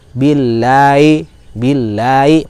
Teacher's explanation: Huruf ha dia punya karakter ya, yaitu rokhwah, maka mengalir, dan hati-hati dalam ha ini suka menghilang bunyinya. Billahi, billahi, maka perjelas bunyi ha-nya.